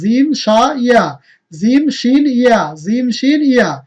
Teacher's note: তারপর জিহ্বার আগা উপরের মাড়ির সাথে লাগিয়ে উচ্চারণ করতে হবে লাম, নুন, র, লাম, নুন, র। আর জিহ্বার মাঝখান থেকে এই ৩টা বর্ণ